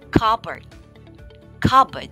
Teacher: the p is generally silent the o is also not emphasized